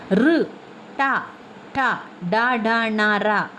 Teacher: ನಾಲಗೆಯ ಮೇಲ್ಭಾಗವಾದ ಮೂರ್ದವೆಂಬುವುದರ ಸಹಾಯದಿಂದ ಹುಟ್ಟುತ್ತದೆ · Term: ಮೂರ್ಧನ್ಯಾಕ್ಷರಗಳು